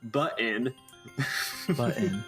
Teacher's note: You have a very pronounced glottal stop. Button. If you just say button, that's like normal Texas.